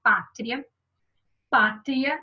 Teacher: o som passa do mais baixo para o mais alto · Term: ditongo crescente